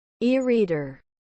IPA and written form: ˈiːˌriːdər (E-Reader)